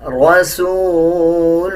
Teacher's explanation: را کے اوپر زبر ہے، را کو پر یعنی موٹا پڑھا جائے گا